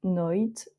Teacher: noite, le E de la fin ne se prononce pas.